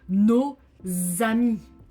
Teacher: You have to link the S of no with the A of ami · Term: liaison